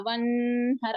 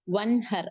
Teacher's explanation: குன்னா இல்லாமல் நூனின் சத்தத்தை வெளிப்படுத்தி ஓத வேண்டும் அதனாலதான் இதை வெளிப்படுத்துதல் இஸ்ஹார் அப்படின்னு சொல்லிட்டு சொல்றோம் அப்போ ஒன்ஹர் அப்படித்தான் ஓதுறோம் · ஒன் குன்னா குடுக்கல நூனோட சத்தத்தை வெளிப்படுத்தி ஓதுறோம்